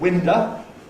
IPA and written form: ˈwɪndə (winder)